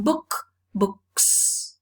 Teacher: the plural morpheme is realized as a voiceless sound because the previous sound is a voiceless non sibilant sound